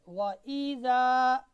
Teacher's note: हमज़ा का मखरज गले का इंतहाई हिस्सा जो कि सीना की तरफ है वहाँ से हमज़ा अदा होता है।